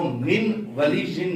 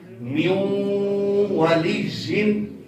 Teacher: اس کو من ولی جن نہیں پڑھنا بلکہ میو والی جن. نون ساکن کو چھوڑ دیا جائے گا کیونکہ نون جو ہے وہ ساکن ہے اور اس سے آگے والا حرف مشدد ہے، تو ساکن حرف کو چھوڑ کر مشدد کو پڑھا جائے گا میو والی جن.